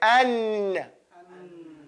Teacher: To say an and to hold that air in your nose, that's called ghunna.